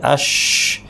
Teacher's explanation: শিনের উচ্চারণের জায়গাটা হচ্ছে, মূল পয়েন্টটা হচ্ছে জিহ্বার মাঝখানটা। জিহ্বার মাঝখানটা, এটা পাশের ছবিতে আপনারা দেখতে পাচ্ছেন যে তালুর খুব কাছাকাছি নিয়ে আমরা এটা এটা এটা উচ্চারণ করছি।